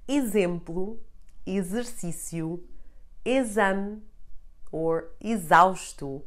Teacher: So, words like exemplo (example), exercício (exercise), exame (exam) or exausto (exhausted) are all read with the [z] sound.